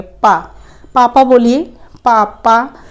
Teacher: ठीक है, अब जैसे कि आप बोलिए कि पा बोलेंगे तो आपके ऊपर के ओष्ठ और नीचे के ओष्ठ दोनों ही छू जाएंगे